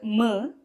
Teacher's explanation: This is a labial sound. Oshtya. It is an oshtyaha. That is, it is produced from the lips.